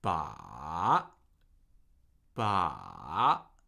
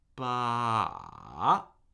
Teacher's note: I'm ending on a pitch that's higher than my starting pitch. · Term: third tone